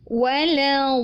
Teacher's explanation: Jadi bukan dibaca wala do bukan tetapi wala do. Jadi lamnya kita baca tipis lalu kita menekan karena huruf dhadnya ada tasydid baru tebal. Nah, lamnya tipis. · Sekalipun sebelumnya kita membaca huruf dhad yang tebal, isti'ala dan juga dia idbaq, tapi hati-hati huruf lam tipis karena dia istifal